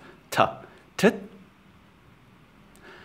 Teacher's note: this is not a th as you would have it in english but just a hard t sound